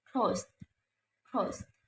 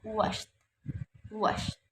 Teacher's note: Consonant sounds ta for verbs ending in voiceless sounds